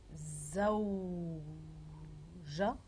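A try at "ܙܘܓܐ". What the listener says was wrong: Pourquoi je? C'est pas de l'arabe? Zaouga.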